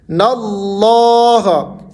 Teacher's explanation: لفظ اللہ سے پہلے نون کے اوپر زبر ہے، تو یہاں پر لفظ اللہ کو موٹا کرنا ہے